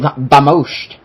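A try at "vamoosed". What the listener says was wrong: Vamoose, not Vamoosh.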